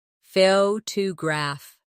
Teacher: The stress is on the first syllable, photograph. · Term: word stress